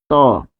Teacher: দন্ত হচ্ছে দেখুন ত। যেটা বললে যেটা উচ্চারণ করলে দাতের দিকে স্পর্শ লাগে